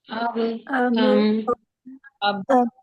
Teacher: बा और मीम दोनों होंठों के मिलने से अदा होते हैं।